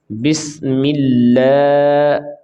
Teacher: یہ لام کو کھینچ کے پڑھیں گے 1 الف کے برابر، یہ حروف مدہ کے قائم مقام ہے تو اس کی لمبائی 1 الف کے برابر، اس سے زیادہ بھی نہیں اور اس سے کم بھی نہیں۔